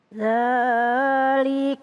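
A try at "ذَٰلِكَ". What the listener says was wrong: kepanjangan. Ya, dzalika kepanjangan. Dzalika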